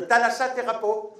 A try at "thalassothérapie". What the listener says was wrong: Non, thérapie. Non, thalasso. Je t'ai dit, déjà, on dit thalassothérapie, pas thalassithérapie. Non, t'as pas dit pi, t'as dit po.